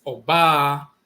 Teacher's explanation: it's a high tone and a low tone following